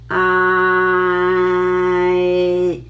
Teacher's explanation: from double A, open your mouth wide and then gradually close, gradually transit to the ending part. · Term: AAI